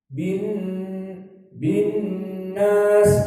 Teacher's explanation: Dan perhatian kepada nun an-nas harus dari khaysum karena dia nun musyaddadah, makhrajnya dari khaysum gunnah. Bin nas keluar dari hidung.